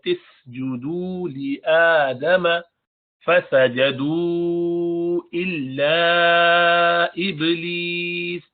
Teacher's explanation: با پر قلقلہ کریں گے